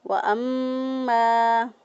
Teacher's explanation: میم مشدد پر ہمیشہ گنہ ہوتا ہے، گنہ کرتے ہوئے میم کو ادا کیا